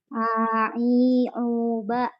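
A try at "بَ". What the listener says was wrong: Ada mengalir sedikit ya.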